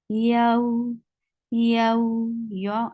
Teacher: And what you have to do, you have to make it 2 counts long and you have to say them very softly. · The makhraj of ya is you are lifting middle part of your tongue towards your palate, but it's not touching your palate. So this makes ya very soft, and attach with ya wow with very soft touch. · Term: lean letters